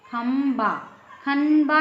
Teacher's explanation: इसमें म निकल रहा है म का उच्चारण निकल रहा है